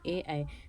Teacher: कंठ और ताल से बोले जाते हैं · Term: कंठ ताल